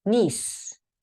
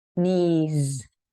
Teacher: in your mouth but one does have one has no voice the S has no voice but the Z is more of a vibration and includes your voice